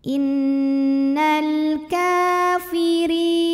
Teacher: secara tarqik sebab rnya ini berbaris di bawah kasrah ya maka cara bacanya tipis pangkal lidah datar